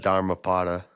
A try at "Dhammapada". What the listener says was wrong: Isn't it Dhammapada? There's no R. No, Dhamma.